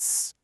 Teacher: The engine is off, voiceless. It's made on that ridge behind the teeth, alveolar.